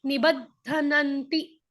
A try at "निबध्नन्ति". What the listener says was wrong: धनन नहीं ना, धनन में क्या हो गया? धनन में ध पूरा हो गया, न नन, धनन, धनन नहीं है।